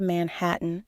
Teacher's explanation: pronouncing Manhattan with a clear T sound in the middle and a slightly nasalized a at the end